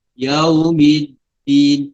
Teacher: Jadi dalam tasdid tu dia ada 2 dal. Jadi mi terus pergi kepada huruf dal yang sukun, baru pergi kepada dal yang berbaris di bawah. Yaumiddin. Tapi bukan kita sebut dengan terlalu cepat.